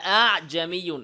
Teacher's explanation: মাদের হরফ আলিফ আর হাকিকি হামজার মাঝামাঝি থেকে দ্বিতীয় হামজাকে উচ্চারণ করতে হবে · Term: তাসসিল